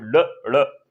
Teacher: जो जीभ वो पहले मूर्धा से टच होती है, उसके बाद फिर झटके के साथ बाहर आती है · ओके, अगर हम इनकी बात करें, तो ये दोनों उच्चारित कहां से होते हैं? ये मूर्धा से उत्पन्न होते हैं, यानी मूर्धन्य से उच्चारित किए जाते हैं दोनों ये। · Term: उच्छिष्ट व्यंजन